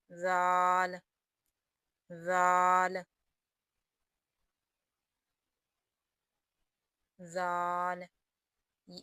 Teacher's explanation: دال، زال کو بھی تھوڑا نرمی سے ادا کریں گے، زال، زال، زال، اس کا مخرج بھی سا کے مخرج کی طرح ہے، یعنی زبان کی نوک اور دانتوں کے سرے